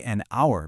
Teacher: we say an hour because that H is totally silent. The word starts with a vowel sound.